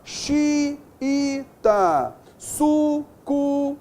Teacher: a segunda vogal é tônica, é o U ou o I